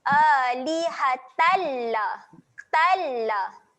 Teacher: Tal dekat sini bacaan asimilasi, gabungkan terus bunyi. Huruf ta baris atas ni masuk terus pada bunyi lam. Jangan dengungkan dekat sini.